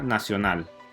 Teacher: Esta palabra tiene tres sílabas, primero na, segundo sio y tercero nal. Si gritas la palabra nacional, notarás una vez más que la última sílaba nal lleva la mayor fuerza y como resultado es la sílaba tónica.